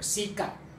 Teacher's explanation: in Indonesian language, the final sound is not plosive. I mean, sikat, like, there is no t, there is no sound, usually.